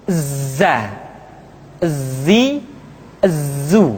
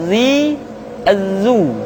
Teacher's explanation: ketika kita mengucapkan huruf dza suara kita mengalir akan tetapi nafas tidak boleh mengalir